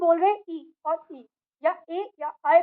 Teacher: जब हम 'इ' या 'ई ' या 'ऐ' या 'इ' बोलते हैं, तो हमारी जीभ का एक हिस्सा तालू के स्थान पर आता है। अब, अगर हम इस स्थान को तालू मानते हैं, तो हमारी जीभ को आगे और पीछे हिलना चाहिए।